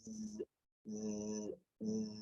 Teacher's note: Esa es la S cuando no tiene vibración. Y está el sonido de la S con vibración, que es como un zumbidito, es como hacer zzz, zzz, zzz, que es el sonido de la Z.